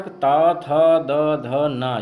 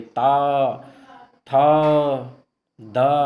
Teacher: ता वर्ग त, थ, द, ध, न ये दांतों का स्पर्श करते हैं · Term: दंत वर्ग